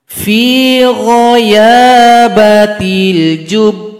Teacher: Cara berhenti di sini ba tasydid disukunkan, kemudian tunggu 2 detik baru dipantulkan karena huruf qalqalah.